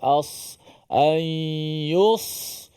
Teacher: Sini banyak keluar nafas bila kita sebut ada huruf sad. Huruf sad yang huruf yang keluar angin, keluar nafas.